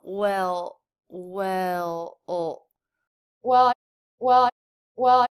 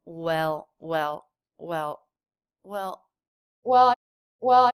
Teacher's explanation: she certainly doesn't bring her tongue tip up she just makes a quick little dark sound here for the L